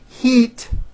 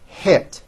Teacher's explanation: when it should have an i it's pronounced as an e think of the sound e as in heat as being high up and I as in hit as being a little bit lower